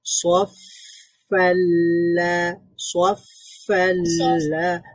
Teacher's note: ফায়ের মধ্যে আবার আছে রাখাওয়া, মানে আওয়াজটা জারি থাকবে।